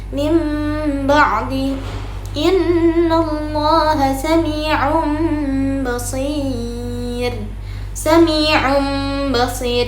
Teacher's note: mengganti suara huruf nun sukun atau tanwin menjadi suara huruf mim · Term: iklab